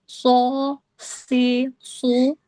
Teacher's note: Hurufnya akhir ujung lidah diletakkan pada dinding bagian dalam gigi seri bawah sehingga suara keluar melalui cerah antara gigi seri atas dan bawah. pangkal lidah terangkat dan tanpa membulatkan bibir · Jadinya untuk short ini kan termasuk huruf sofir. Ee makanya dia terjadi sofir atau desis itu karena ada celah di antara gigi seri atas dan bawah ini. Kemudian ee karena pangkal lidah terangkat dan pangkat lidah terangkat itu membuat ee huruf shad nanti dibaca tebal.